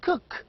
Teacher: a voice sound it is a voiced sound so veilers are sounds that are produced with the back of the tongue against the velum · K is a voiceless sound. It has no vibration. · Cook begins with k, velar sound, and also cook ends with k, a velar sound. K is a voiceless sound.